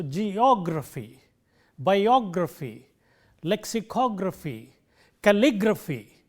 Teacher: The syllable immediately preceding graphy is stressed.